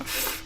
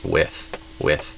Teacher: a th sound, which is the tongue touching the upper teeth, not the lower lips touching the upper teeth. So not f, but with with.